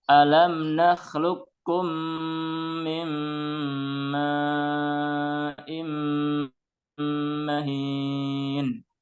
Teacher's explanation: Nah, qaf sukun yang harusnya qalqalah. Ya, di sini langsung dimasukkan ke kaf. Ya, qalqalahnya hilang.